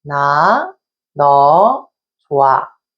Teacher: the hieut sound is deleted when followed by a vowel.